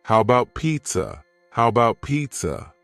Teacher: The first A in the word about is gone.